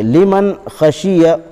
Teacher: نون ساکن کے بعد حروف حلقی کے 6 حرفوں میں سے خا آیا ہے، اس لیے بغیر غنہ کے جلد پڑھیں گے۔ لیمن خشی، خا زبر خ، شین زیر شی، خشی، یا زبر ی، خشیہ۔